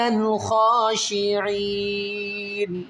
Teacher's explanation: اس نون کو ساکن کریں گے اور عین کو آپ نے 3 الف کی مقدار کھینچنا ہے